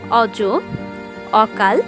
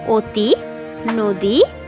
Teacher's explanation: প্রথমেই স্বর অ এর উচ্চারণ সাধারণত দু রকমের হতে পারে। প্রথমত স্বাভাবিক, স্বর অ এর মতোই হবে। এরপর আসছে সংবৃত, এক্ষেত্রে ও এর মতো উচ্চারণ হবে। স্বাভাবিকের উদাহরণ হিসেবে আমরা বলতে পারি অজ, অকাল, এবং সংবৃতের উদাহরণ হিসেবে আমরা বলতে পারি অতি, নদী ইত্যাদি।